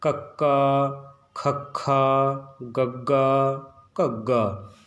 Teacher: ਜੀਭ ਦਾ ਪਿਛਲਾ ਹਿੱਸਾ ਜਿਹੜਾ ਗਾ ਉਹ ਉੱਪਰ ਜਾ ਕੇ ਛੂੰਹਦਾ ਗਾ, ਤਾਂ ਕਰਕੇ ਕੱਕੇ ਦੀ ਆਵਾਜ਼ ਸਹੀ ਬਣਦੀ ਹੈ। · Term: ਕੱਕੇ ਵਾਲੀ ਜਿਹੜੀ ਪੰਕਤੀ